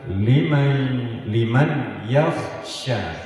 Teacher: Maka suara nun mati melebur ke huruf ya dan didengung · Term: nun mati dengan ya